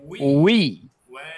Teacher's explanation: দুই ঠোঁট প্রথমে গোল হবে শেষের দিকে স্বাভাবিক হবে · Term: ওয়াও জের উই